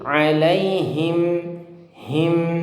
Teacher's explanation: Dan juga ketika membaca huruf h tadi yang him, ini sempurnakan sifat sifat daripada h-nya, h besar, him, ya. Dan juga kasrohnya, jangan sampai terbaca hem. Ini salah. Ini ayatnya dibaca miring, alaihim.